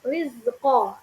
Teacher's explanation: ada rok yang berharakat kasrah nah ini dibaca tarqiq atau tipis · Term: tarkik atau tipis